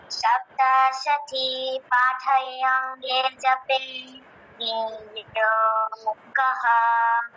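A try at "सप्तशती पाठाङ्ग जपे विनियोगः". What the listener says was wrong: হ্যাঁ, সপ্তশতী পাঠাঙ্গ, পাঠাঙ্গ একসাথে বলতে হবে। সপ্তশতী পাঠাঙ্গ জপে বিনিয়োগः।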